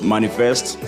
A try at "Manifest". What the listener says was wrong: Manifest. Well, the way you say it makes it sound like it's two words, like money fest. Like a festival for money. Manifest is the word.